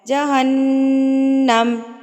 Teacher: میم مشدد، میم مشدد پر آپ نے کیا کرنا ہے؟ غنہ کرنا ہے